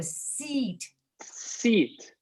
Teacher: Yes, your seat needs to be even tighter. This is what's called a tense vowel. Your muscles are tense.